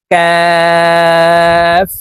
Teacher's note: কাফ হরফ জিহ্বার গোড়া থেকে একটু আগে বাড়াইয়া তার বরাবর উপরের তালের সঙ্গে লাগাইয়া উচ্চারণ করব